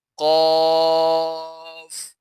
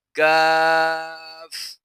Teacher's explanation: قاف جو کہ حروف مستعلیہ میں سے ہوتا ہے اسے پر پڑھا جاتا ہے، اور کاف کو باریک پڑھا جاتا ہے